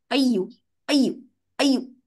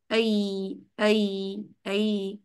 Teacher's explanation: ہم نے اس کو رخاوہ دینا ہے, آواز میں چلنے والی کیفیت موجود رہے